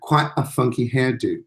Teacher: you actually have this pause this stop at the glottis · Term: glottal stop